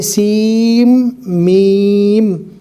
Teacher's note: سین نہیں پڑھنا، سین کو میم سے ملانا ہے، سیم میم۔